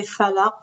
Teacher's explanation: the characteristic of the qaf is when it has sukun, you have to bounce it, and you call it qalqala